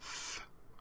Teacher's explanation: the dental voiceless fricative is th, again like a rough th sound like our English th